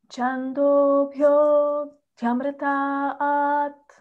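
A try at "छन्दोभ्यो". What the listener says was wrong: Just a swara. Chando bhyo, chando, it's low. Chando bhyo amritat.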